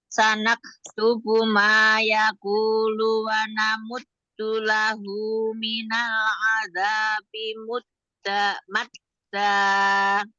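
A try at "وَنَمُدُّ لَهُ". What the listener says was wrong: Jangan dinabar. Tasdidnya jangan dinabar. Jangan wa namuddu lahu. Enggak. Wa namuddu lahu. Wa namuddu lahu.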